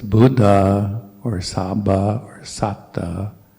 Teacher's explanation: if you listen closely to the monks, you'll hear that little space between two consonants